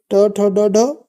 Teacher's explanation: ट ठ ड ढ कहाँ से बोले जाते हैं? मूर्धा से।